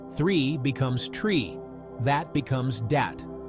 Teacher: The th sound becomes t or d.